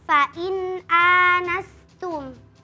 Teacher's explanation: Yang pertama pada kata fain anastum hukumnya izhar halqi. Karena nun sukun bertemu dengan huruf hamzah maka dibaca jelas.